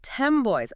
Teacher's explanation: 10 boys is universally pronounced by native speakers as 10 boys with an M.